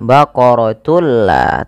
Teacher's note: dengan cara memasukkan tunnya kepada lam dan diganti bunyi suara nunnya menjadi suara lam. Baqaratul la, tapi tidak ditahan. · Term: idgham bila gunnah